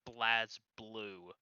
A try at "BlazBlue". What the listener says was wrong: Actually, it's Blay Blue. If you listen to the announcer later, she she doesn't even pronounce the Z. it's just Blay Blue.